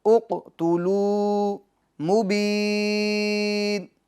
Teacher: اق قاف میں قلقلہ ہوگا اور پور بھی کریں گے